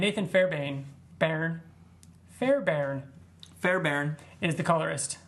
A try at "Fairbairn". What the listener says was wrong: There's no R. It's Fairbairn. No, you said Fairbairn.